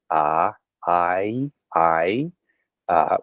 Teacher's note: that I sound is, again, a diphthong. It glides from a vowel that's very forward.